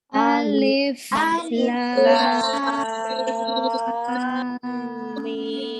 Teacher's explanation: Nah, alif itu dibaca 1 harokat, lam 6 harokat. Kemudian di antara lam ke mim itu ada dengung, ya, ada dengung atau gunnah karena lamnya dimasukkan ke huruf mimnya. Di sini ada pertemuan mim sukun bertemu mim.